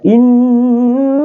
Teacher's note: Inna ini adalah dia adalah gunnah, ya, gunnah. Jadi tahan sampai 3 harakat, ya. Inna.